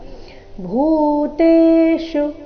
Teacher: ಭೂ ಇಲ್ಲಿ ಮಹಾಪ್ರಾಣ ದೀರ್ಘ